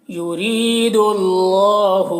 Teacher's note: रॉ को बारीक पढ़ना है और या मद्दा है, एक अलिफ के बराबर खींचेंगे।